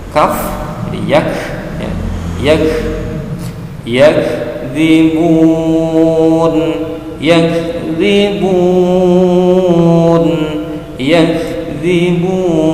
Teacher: Ini adalah huruf hamus, maka keluarkan desisan napas sedikit dari mulut kita.